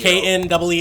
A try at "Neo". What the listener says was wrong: No. NEO. Not like knee. N. Like N. N. said, Neo.